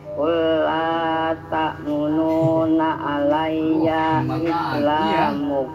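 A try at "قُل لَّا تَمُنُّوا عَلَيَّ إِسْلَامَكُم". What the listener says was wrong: Diulangin, jangan tamununa tapi tamunnu.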